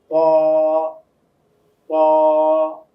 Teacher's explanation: জিহ্বার আগাটা উপরের তালুর সঙ্গে গিয়ে লাগবে, আওয়াজটা মোটা হবে।